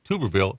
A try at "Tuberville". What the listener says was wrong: You said Tuber.